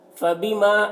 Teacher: الف مدہ ہے، ایک الف کے برابر کھینچیں گے